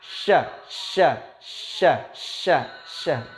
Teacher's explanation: Jadi lidah bagian atas dan hampir menyentuh langit-langit atas. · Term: huruf sya